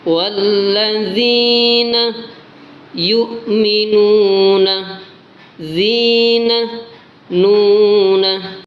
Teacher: dalam lafaz zina dan yu'minuna ini dibaca mat, panjangnya 2 harokat atau sama dengan 1 alif. Jadi bacanya wallazina yu'minuna zina nuna.